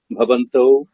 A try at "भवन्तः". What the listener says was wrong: আচ্ছা ভবন্তः, ওখানে কিন্তু আকার হবে না, ভবন্তাহ এরকম না, ভবন্তः। ভবন্তः ভবন্তः আরক্ষকাः সन्ति, করেছেন তো?